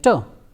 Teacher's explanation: alveolar sounds like term so during the production of terse ound the tip of the tongue touches to the teeth ridge and there is a complete closure of the air and the air is released